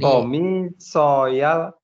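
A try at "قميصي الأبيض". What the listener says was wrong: Laisa soya, komisial. nah, igsili komisial abyad. Jadi isim itu kan kalau bersambung dengan domir ya, domir mutakalim, dia berubah jadi i ya. Contoh kitabun. Bersambung ya menjadi kitabi ya, bukan kitabui ya, tapi kitabi. Qalamun qalami ya, mistoratun mistorati dan seterusnya.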